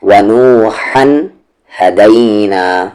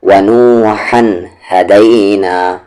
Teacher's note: اور ایک اور چیز یہاں پر کہ اس ہا کا مخرج مڈل تھروٹ ہے، بیچ والا حلق ہے، لیکن اس ہا کا مخرج باٹم تھروٹ یعنی کہ نیچے والا حلق ہے